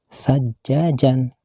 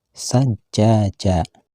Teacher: Dan kalimat sajajan, bila dihentikan membacanya tidak boleh dibaca sajajan, akan tetapi harus dibaca sajaja, panjang pula dibacanya sekitar 2 harkat atau sama dengan 1 alif